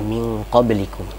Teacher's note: Nun mati ketemu dengan qaf, ini lebih dekat ikhfanya. Sehingga bunyi nunnya itu tidak terdengar